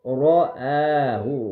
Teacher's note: را کو موٹا، الف کو باریک